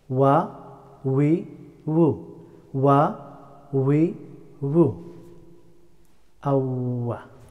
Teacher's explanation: The letter of wow pronounced by rounding two lips, keeping little bit gap.